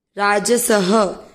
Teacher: स में अ की मात्रा तो विसर्ग को पढ़ेंगे ह